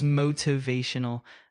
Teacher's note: with the emphasis on the third syllable